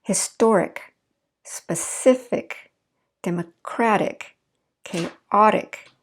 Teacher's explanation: you notice where the stress falls in those syllables, right before the IC